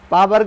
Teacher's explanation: पा बोलिए तो दोनों ओष्ठ आपका सट जाएगा, यानी दोनों क्या होगा? चिपक जाएगा।